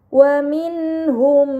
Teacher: terdapat nun sukun bertemu dengan huruf ha. ini dinamakan izhar halqi, maka nun sukun dibaca secara jelas · Maka mim sukun dibaca secara melebur dengan gunnah yang dipanjangkan. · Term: idgham mimi